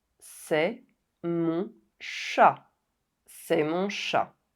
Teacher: The final consonant N of “mon” remains silent.